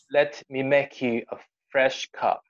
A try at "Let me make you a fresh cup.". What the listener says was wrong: Very good. Very good.